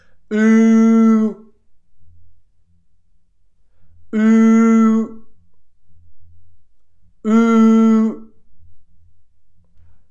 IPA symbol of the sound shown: u: